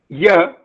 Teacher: Ya is a voiced, palatal, semivowel.